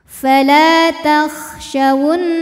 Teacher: wajibul gunah atau gunah atau gunah musyaddadah karena Nun bertasdid maka dibacanya dengung bunyi n tahan sampai ada suara masuk masuk hidung